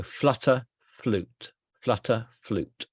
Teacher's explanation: did you notice there's no intrusive ya in here